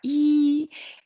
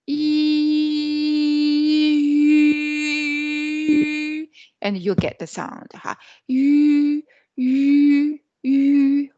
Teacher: we change the shape of our mouth from unrounded to rounded